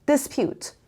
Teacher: The stress is on the second syllable, and here, this is a short sound.